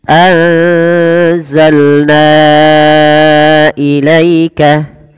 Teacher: membedakan adalah pangkal lidahnya maka anza anzalna kemudian berafal anzalna ilaika pada lafalna wajib kita panjangkan sepanjang empat atau lima harakat kenapa karena Ia merupakan bacaan yang kita namakan dengan Mad Jaiz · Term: Mad Jaiz munfasil